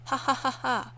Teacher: you find nasality in posed laughter. That kind of ha ha ha ha sound that you never get.